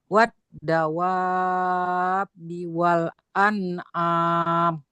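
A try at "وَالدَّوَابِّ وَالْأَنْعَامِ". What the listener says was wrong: Coba tambah lagi dikit, Bu. Kurang. Yang wa ini, yang tadi wa panjang. Tadi kurang panjang.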